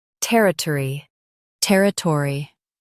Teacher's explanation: ter i tor e territory ter i tor e territory Stress ter. Keep uh and e soft.